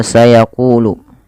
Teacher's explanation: Mad thii ditandai dengan huruf q yang berharakat dah bertemu wau maka panjangnya ku dibaca Dua harakat